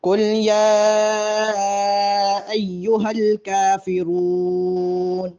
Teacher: کافرون پر وقف ہے، لمبا کر کے آیت پر وقف کریں گے